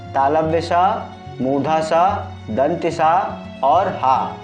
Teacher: बारे में समझ लेते हैं तीसरे प्रकार का व्यंजन है उष्म इन व्यंजनों का उच्चारण करते समय वायु मुख के विभिन्न भागों से टकराकर ऊष्मा उत्पन्न करती है या घर्षण करते हुए निकलती है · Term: ऊष्म व्यंजन